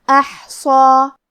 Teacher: صاد حروف التفخیم میں سے ہے تو ہم صاد کو بھاری آواز میں پڑھیں گے اور کیونکہ اس پہ کھڑا زبر ہے تو یہاں مد الف ہے. مد الف اپنے پیچھے والے حرف کا حکم لیتا ہے تفخیم میں اور ترقیق میں لہذا ہمیں مد الف کو بھی بھاری آواز میں پڑھنا ہے · کلمت احصا میں حرف الحا پہ جزم ہے تو ہمیں حا کو ظاہر کرنا ہے. صاد حروف التفخیم میں سے ہے تو ہم صاد کو بھاری آواز میں پڑھیں گے اور کیونکہ اس پہ کھڑا زبر ہے تو یہاں مد الف ہے.